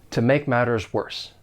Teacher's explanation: I am going to pronounce those T's in matters as a flap T. · you may often hear a weak to. It's going to sound more like t with that schwa sound. It's a very slight soft sound.